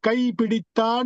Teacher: கைப்பிடித்தான் என்பதும் உங்களுக்கு குறிலாகத்தான் ஒலிக்கும் நெடிலா ஒலிக்காது